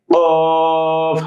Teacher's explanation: কফ জিহ্বার গোড়া উপরের তালুর সঙ্গে লাগিয়ে কফ হালকা বাড়ি খাবে।